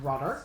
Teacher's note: D can be flat, like T.